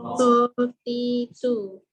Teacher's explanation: To sama juga, cuma beza dia dengan ta. To ni tebal. Okey, to ni sebab dia tebal, kita baca po ti tu.